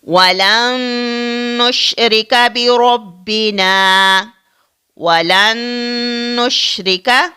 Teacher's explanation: یہ نون ساکن اس نون مشدد کے اندر مدغم ہو جاتا ہے. تو اسی کا نام ادغام ہے.